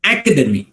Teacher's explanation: academy, right, the first syllable gets the stress